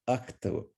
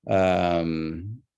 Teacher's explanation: And so suddenly you still have K, T, and B in order, but you notice the vowel disappeared. So now the K and the T are right next to each other.